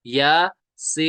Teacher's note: एक है हुरूफ मद्दा, फिर है मद्द लाजिम, यानी या को हम एक अलिफ खींचेंगे, सीन को हम तीन अलिफ खींचेंगे